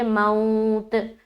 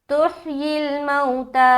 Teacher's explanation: बाज़ औक़ात लोग ये सोचते हैं कि आखिरी हर्फ पर जज़्म देकर स्टॉप करना है, तो बहुत से लोग यहाँ पर पढ़ेंगे मौत, जो कि गलत है। हमें खड़ा ज़बर को पूरा अदा करना है